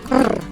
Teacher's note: It's called the trill or rolled R and is known to be very difficult to pronounce. The official name of this R is the alveolar trill.